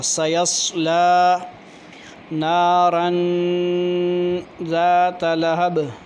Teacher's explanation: نارن پہ اخفا کریں گے، غنہ کریں گے، ناک میں آواز لے جائیں گے کیونکہ تنوین کے بعد را، تنوین کے بعد حروف اخفا میں سے ہے حرف۔